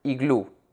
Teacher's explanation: Iglú has two syllables, I and glú. Glú, which is the last syllable of the word, is the stressed syllable. Moreover, the last letter of iglú is a vowel.